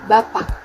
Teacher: Bunyi fonem k di akhir terdengar lebih tertahan. Walaupun bunyinya sedikit berbeda, arti kata tidak berubah. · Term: alofon